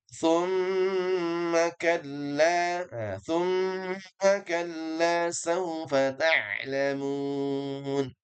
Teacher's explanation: Dikata thumma, tapi tidak boleh buru-buru. Ya, harus ada dengungan karena mim yang bertasydid dia temponya dipanjangkan. Tempo gunnahnya dengungan kita panjangkan.